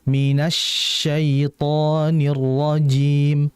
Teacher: Minas itu syinnya ditahan lagi karena syin di situ kan bertasydid ya. Kemudian syin ini kan memiliki sifat namanya adalah hames pasti.